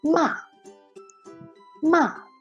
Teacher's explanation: the fourth tongue is a falling tongue